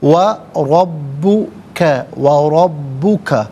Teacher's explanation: را پر زبر ہے، را کو پر کر کے پڑھیں گے، با مشدد ہے، جماؤں کے ساتھ پڑھیں گے، کاف پر زبر، اس سے الغفور کے لام ساکن کے ساتھ ملائیں گے، اور غفور میں را پر پیش ہے، را کو پر کر کے پڑھیں گے۔